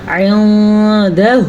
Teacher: نون کو تھوڑا چھپا کے پڑھتے ہیں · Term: اخفا